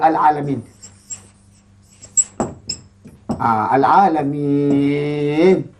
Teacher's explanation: hendaklah dibaca dengan panjang dua harakat